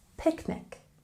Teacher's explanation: We have a stress on the first syllable in picnic.